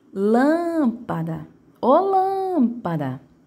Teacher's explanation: Então, lâmpada, a sílaba de maior tonicidade vai ser a antepenúltima, né?